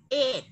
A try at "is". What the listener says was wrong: Is. Cái chữ Z đằng sau. Is.